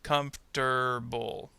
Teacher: it sounds like the R sound is going to go with the next syllable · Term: metathesis